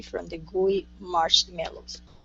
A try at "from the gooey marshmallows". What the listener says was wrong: let's work on inonation at the end of this sentence. Instead of saying from the gooey marshmallows. Okay, it's we're going to come down from the gooey marshmallows.